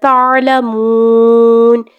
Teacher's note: رکتے ہوئے ہم لوگوں نے نون کو ساکن کر دینا ہے لیکن رکتے ہوئے ہم لوگوں نے 2 سے 3 سیکنڈ کے لیے لمبا کرنا ہے